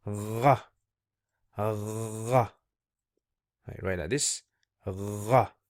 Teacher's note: it's like saying ga, but ra from the throat, a bit of a phlegmy kind of sound